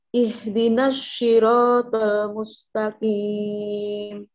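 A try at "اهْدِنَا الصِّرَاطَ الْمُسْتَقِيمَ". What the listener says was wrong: Nah, haknya masih bukan tapi ihdina. Kemudian sodnya jangan ke shin, Bu, tapi huruf sod tersendiri. Ihdinas ihdinas siratal mustaqim.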